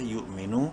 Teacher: واو مدہ ہے، نون کو ایک الف کے برابر لمبا کریں گے، الف سائلنٹ ہے.